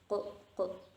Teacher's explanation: Nah, terus selanjutnya ada kof atau ini kita sebutnya ko. Pangkal lidah bertemu dengan langit-langit berdaging atau langit-langit lembut, ko gitu. Nah, ini selanjutnya ada kaf.